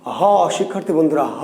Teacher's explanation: হ উচ্চারিত হয় কোথা থেকে? কণ্ঠ থেকে।